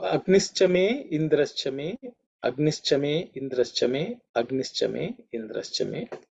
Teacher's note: The visarga in the Agnihi becomes ish because it's followed by cha.